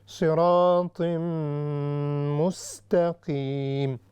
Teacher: تنوین ہے، اس کے بعد میم ہے اور میم یرملون میں سے ہے، اس وجہ سے یہاں پر ادغام ہوگا مع الغنہ